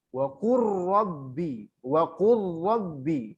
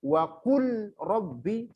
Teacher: idgham mutaqaribain yang boleh dimasukkan itu lam sama ro saja